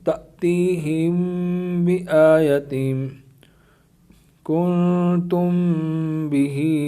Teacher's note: میم ساکن کے بعد حرف با آ جائے تو میم ساکن میں اخفاء شفوی ہوگا، یعنی غنہ کریں گے